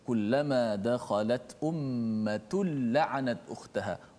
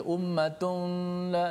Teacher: tanwin tu dimasukkan dalam lam secara total. Maknanya tidak ada lagi tanwin nun tu. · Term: idgham bila gunnah